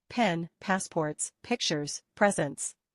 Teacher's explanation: you need to curl your lips tight and put air forward into your mouth open your lips quickly Do not use your voice